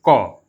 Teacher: क बोलते हैं तो मुंह से ज्यादा वायु नहीं निकलता है वायु का प्रवाह नहीं होता है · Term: अल्पप्राण